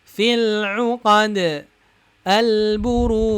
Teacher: syiddah majhurah, artinya suaranya tertahan, nafasnya juga tertahan